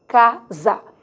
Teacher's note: o S intervocálico tem som de Z, quer dizer, emite o fonema do Z